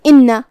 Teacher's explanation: نون پہ تشدید ہے، 2 حرف کے برابر ہمیں نون کو پڑھنا ہے کیونکہ تشدید کی اصلیت 2 حرف ہوتی ہے. · حمزہ کی ادائیگی حلق کے نیچے والے حصے سے ہے تو ہم اس کا دھیان رکھیں گے.